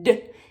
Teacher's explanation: the D sound, you're just gonna turn your little voice on